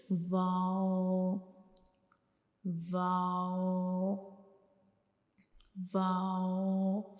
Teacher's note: वाव को हम कैसे अदा करेंगे, दोनों होंठों को आपस में जो है वो सर्कल बनाना है, दोनों होंठों की मदद से एक सर्कल बनाना है, यानी दोनों होंठों को टच किए बगैर